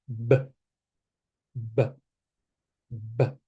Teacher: we call it plosive explosiva in Spanish because we cannot have the sound for a long time it's just an emission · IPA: /b/